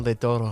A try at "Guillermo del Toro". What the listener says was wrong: You gotta roll the R's, sir. You gotta roll the R's.